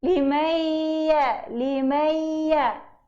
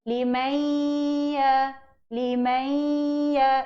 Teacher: Bacaan nun di sini perlu ada sebutan nun itu secara separuh. Perlu ada bacaan itu di rongga hidung. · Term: idgham naqis